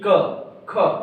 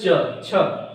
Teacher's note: ऐसे वर्ण जिनके उच्चारण में स्वर यंत्रियों का कंपन नहीं होता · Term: अघोष